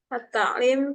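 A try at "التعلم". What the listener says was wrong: ta'allum ya, kalau nggak ada iya-nya ta'allum.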